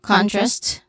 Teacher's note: Contrast, con is stressed